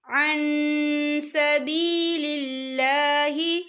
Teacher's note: قل یا اہل الکتاب لم تصدون عن سبیل اللہ، یا دیکھیں عن، یہاں پہ نون ساکن ہے، نون ساکن کے بعد جو ہے سین آ رہا ہے، اور سین جو ہے اکفا کا ورڈ ہے، تو ہم یہاں اکفا کریں گے، نون ساکن کی آواز کو ناک میں چھپائیں گے